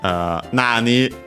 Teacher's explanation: Here we accent on its own on the na, on the first mora.